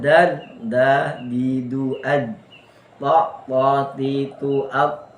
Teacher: yang bersentuhan adalah ujung lidah dengan ujung gusi kan. Gusi bagian ujung. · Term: makhraj